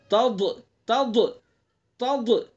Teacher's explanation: ضاد کا مخرج زبان کی کروٹ سائڈ ہے، زبان کی کروٹ کو اوپر کی ڈاڑوں پر لگائیں گے، اوپر کی ڈاڑوں پر.